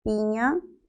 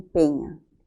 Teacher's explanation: No el desplazamiento horizontal, sino el desplazamiento vertical. La I se entiende que es una alta, mientras que la otra es media.